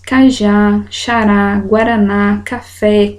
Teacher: Aqui nós temos a última sílaba tônica última sílaba é forte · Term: oxítonas